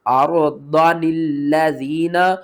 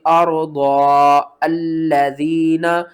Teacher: جب ہم نے یہاں پر واصل پڑھنا ہے تو نون کو ہم الف کے ساتھ ملا کر پڑھیں گے۔